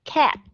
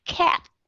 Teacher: nếu mà các bạn unreleased, có nghĩa là các bạn khi mà dùng unreleased sound đó, có nghĩa là các bạn ngưng cái hơi lại